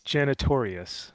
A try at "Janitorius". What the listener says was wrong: Well, the way you said it, genitorious. I thought you were going somewhere else with that. It's Jan. Enunciation.